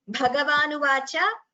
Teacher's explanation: One, Bhagavanuvacha, Mahaprana should be clearer